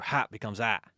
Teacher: the H mysteriously disappears in lots of words. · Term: dropping of H's